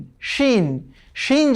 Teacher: শিন যখন আমরা বলবো তখন একটু আমাদের দাঁতের ফাঁক দিয়ে যে বাতাস বের হবে একটু মোটা হয়ে শব্দ করে বাতাস বের হবে